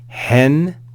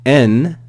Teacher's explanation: hen with rough breathing and N with no rough breathing